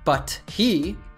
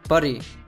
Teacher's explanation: First, he drops the H, then he converts the T into a D, American T, and then he links the 2 words, which results in buddy. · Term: connected speech